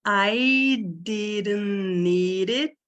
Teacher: Esse D aqui, ó, virou um R, né?